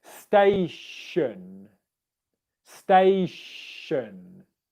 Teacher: example in the word television it's a sound television television whereas in the word station it's an unvoiced sh sound